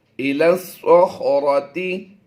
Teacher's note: لام کو اس سواد کے ساتھ ملانا ہے. یہ یا خالی ہے، یہ زبر جو ہے یہ لام کے اوپر ہے، اور الف اور لام یہ بھی خالی ہیں، تو اس لام کو سواد سے ملائیں گے.